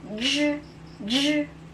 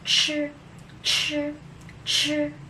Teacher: The ZH is J, J. There's a vibration. J, J. Then the CH is Ch, Ch, Ch. There's no vibration.